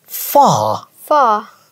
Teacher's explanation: So দেখেন British হচ্ছে far, লাস্টে থাকলে আর উচ্চারণ করে না ওরা। যে কোনো ওয়ার্ডের শেষে আর থাকলে উচ্চারণ করে না।